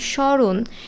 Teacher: এই স্মরণে ম ফলের উচ্চারণ হচ্ছে না